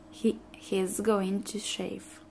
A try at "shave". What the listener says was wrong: You said F.